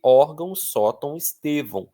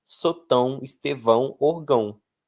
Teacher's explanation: A minha tendência é essa, mas como a força não é no ão, é na sílaba anterior, isso me obriga pela lógica a deixar bem claro isso através de um acento gráfico.